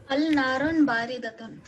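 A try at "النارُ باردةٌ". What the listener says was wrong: Annaru. Annaru. So at the moment you put al, you will make run into ru. So annaru baridatun.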